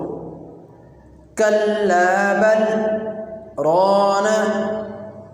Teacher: لام کا را کے ساتھ سکتہ کی وجہ سے اتصال نہیں ہو رہا۔ اس لیے ہم یہاں دونوں مثالوں میں ادغام کے قاعدے کو فالو نہیں کریں گے، بلکہ سکتہ کے قاعدے کو فالو کرتے ہوئے ہم یہاں پر وقف کریں گے۔